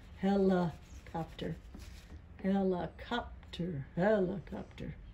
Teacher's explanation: We didn't really say li or lie, did we? We said la. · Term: schwa